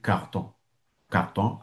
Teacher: si vous rencontrez un Breton, il va dire carton. carton avec le R du milieu